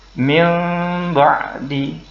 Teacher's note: Jadi bacanya bukan min ba'di, tetapi min ba'di. Nah, ketika menukar bunyi nun menjadi huruf mim, mulut kita tidak harus ditutup rapat, sisakan sedikit sehingga bacanya menjadi min ba'di. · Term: iqlab